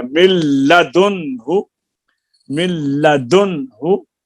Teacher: देखो नून को लाम बनाकर दोनों लाम को एक कर दिया, चनाचा पढ़ने में सिर्फ लाम आता है, अगरचे लिखने में नून भी बाकी है।